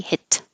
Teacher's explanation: The T and the L are made in the same place, so you don't release the T. Hit. You hold it.